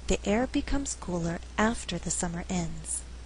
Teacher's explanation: the word being emphasized here is after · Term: stress for emphasis